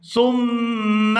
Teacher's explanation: تعلمون وَعَلَّمَ آدَمَ الْأَسْمَاءَ وَعَلَّمَ آدَمَ الْأَسْمَاءَ كُلَّهَا ثُمَّ، یہاں سا کو میم مشدد کے ساتھ ملائیں گے تو غنہ کریں گے